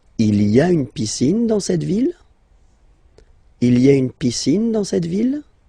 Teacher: don't forget to raise your voice at the end because it's a question